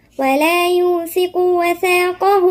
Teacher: هنا الثاء من الحروف اللثوية. بعدين نشوف برضو الهاء دي مد صلة كبرى وبعدها الهمزة يبقى هتمد 4 حركات.